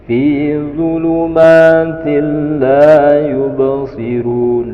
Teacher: Fi zulumatil la yubsirun, langsung tin dibaca til, langsung ke lam, dileburkan ke lam namun tanpa didengungkan. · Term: idgham bila gunnah